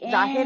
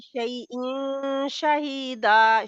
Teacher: नून को आपने हाइड करना है, इख्फा करना है